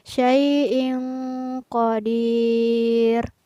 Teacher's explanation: Maka di sini hukum bacaannya adalah ikhfa, artinya tanwinnya tidak terbaca jelas atau dibaca samar karena bertemu dengan huruf qaf